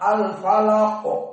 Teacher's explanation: Al-falaq, di akhir qalqalah dan dia mufakhamah.